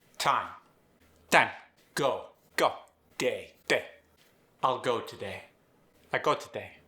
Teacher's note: When speaking with the Singapore accent, you get reduced diphthongs.